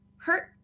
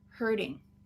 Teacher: by itself, if the T's at the end, we have stop T, hurt. If we're adding an ing, we have a vowel after it. Now it's a flap T, hurting. So my arm is hurt versus my arm is hurting.